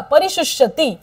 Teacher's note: शूला पहिला उकार पटकन बोलायचा आहे, दुसरा उकार वाढवायचा.